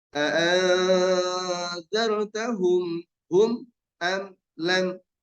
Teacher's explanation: Ternyata mim mati semuanya nggak ada mim dan ba setelahnya. Maka tidak boleh mendengung.